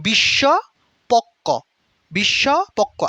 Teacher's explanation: শব্দের শেষে ব্যবহৃত বফলা অনুচ্চারিত থাকে